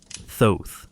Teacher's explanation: The name begins with a harsh glottal friction, Az, and concludes with a lisping softness, Thoth. It rises, then falls.